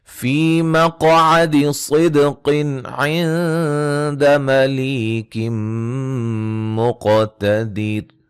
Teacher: فی مقعد صدق عند ملیک مقتدر، فی یا مدہ ہے، قاف کو موٹا ادا کریں گے، صاد کو موٹا ادا کریں گے، یہاں قاف کو موٹا ادا کریں گے، دال پہ قلقلہ ہے، نون تنوین کا اظہار ہوگا، یہاں نون ساکن کا اخفا ہے، لی یا مدہ ہے، نون تنوین کا ادغام مع الغنہ ہے، قاف کو موٹا اور قلقلہ، دید، را کو باریک پڑھیں گے وقفاً وصلاً، ٹھیک ہے جی.